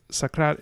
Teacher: So sakrat is very iambic. We have this weak, strong rhythm going on in the language.